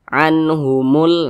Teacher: jelas tidak berdengung maka dibaca jelas jangan dipanjangkan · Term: izhar halqi